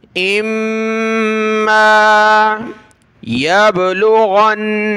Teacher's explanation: बा पर कलकला और गैन को नून के साथ मिला, नून पर गुन्ना